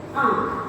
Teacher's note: जो चंद्र बिंदु वाली मात्रा है इसे हम अनुनासिक बोलते हैं या सेमी नासल बोलते हैं, क्योंकि इसकी ध्वनि हमारे नाक से होकर के आती है